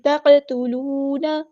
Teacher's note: تا کو تو کی طرف مائل نہیں کرنا